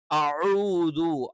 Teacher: ഐൻ എന്ന് പറയുമ്പോൾ തൊണ്ടയുടെ മധ്യഭാഗത്ത് നിന്ന് തന്നെ വരണം.